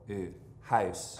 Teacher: down in front and moves up in the back ooh house Belfast English is almost the exact opposite pattern it starts in the back of the mouth and moves up to sort of an arch in the middle a house it's also just a great sound notice the good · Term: mouth diphthong